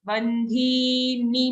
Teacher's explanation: dhi is long but the ni after dhi is short